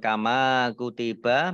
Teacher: mim fathah Alif juga Mad Thobi'i dibaca panjang 2